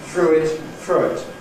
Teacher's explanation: ‘through it’ [ˈθruː ɪt] → [θrʊɪt]